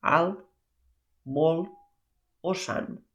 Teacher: la N sí que sona, però la T o no sona o gairebé no sona